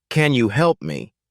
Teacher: the word you is often pronounced as yah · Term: weak forms